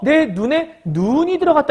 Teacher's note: 사람 눈은 짧게 발음해요. 그다음에 내리는 눈은 길게 발음해요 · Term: 장단